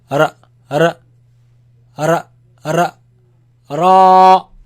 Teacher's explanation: it comes from the tip of the tongue touching the front palate roof.